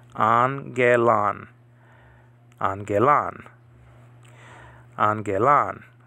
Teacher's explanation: back-to-back gammas, the first one is to be pronounced with an N sound, and then the second one is with a G sound. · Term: gamma nasal